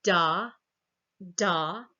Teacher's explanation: that d right is a voiced alveolar stop it's voiced and the voicing is starting at about 17 milliseconds